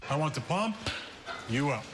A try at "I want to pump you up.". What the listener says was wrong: No. You put the emphasis on the wrong syllable.